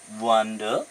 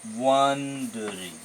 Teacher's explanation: here the first syllable one is stressed so jihetu yate prothom syllable to stressed dia hoise second part